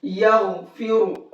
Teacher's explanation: غین کو بھی موٹا کر کے پڑھیں گے اور را کو بھی موٹا کر کے پڑھیں گے